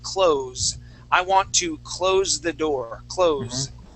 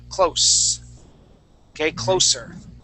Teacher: if I'm using that as a verb that's when we switch that s sound to a z sound